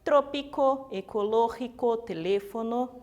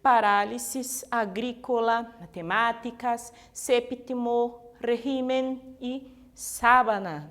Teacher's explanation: Su sílaba tônica é a antepenúltima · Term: Palavras esdrújulas